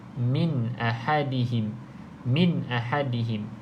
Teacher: Nun ada tanda mati maka kita baca dengan bacaan izhar iaitu bacaan jelas